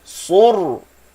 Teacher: Tengok mulut saya masa saya sebut ra sukun. Bibir saya tak akan muncung masa saya sebut ra sukun.